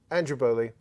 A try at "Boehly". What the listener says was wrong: Actually, it's technically pronounced more Bailey than Boehly. Yes.